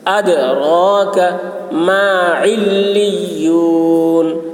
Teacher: وما ادراک دال میں قلقلہ را پر ہوگی, کاف کی آواز باریک ہوگی